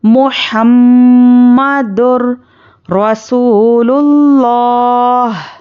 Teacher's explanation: میم مشددہ پر غنہ اچھے سے کرنا ہے